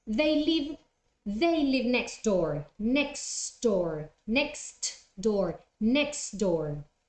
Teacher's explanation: three consonants there and the one that becomes silent is the tee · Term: elision